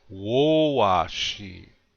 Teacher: Again, the accent is on the first syllable.